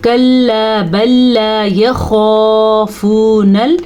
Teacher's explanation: خا کو ہم پر پڑھیں گے کیونکہ خا حروف مستعلیہ میں سے ہے.